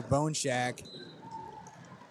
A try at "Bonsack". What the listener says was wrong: It's not Shack, I don't think. Bone Sack.